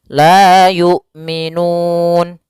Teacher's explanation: panjangnya boleh dua harakat boleh empat harakat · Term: mad ad sukun